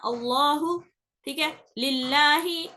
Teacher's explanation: ٹھیک ہے، تو باریک کیسے پڑھا جاتا، لام ہماری زبان جو رہتی اس کو کچھ نہیں کرنا رہتا، اس کو نیچے ہی رکھنا رہتا. نوک زبان اٹھ کے اوپر کے دانتوں کے مسوڑوں کو لگتی، نوک لگتی ہے، آٹومیٹیکلی ہوتا وہ ال بولنے سے جیسا ہو رہا نا، اللہ، ٹھیک ہے، للہ، ایسا جہاں پر انہیں لگ رہی اسی جگہ لگانا رہتا اس کو، نوک زبان کو.